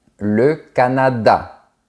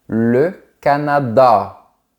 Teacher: Ils ont le A comme les Français, qui se prononce A, mais ils ont aussi le son de la lettre A prononcé à l'arrière de la bouche, surtout en partie finale. Par exemple, en France, on dit « le Canada », mais au Canada, on dit « le Canada ».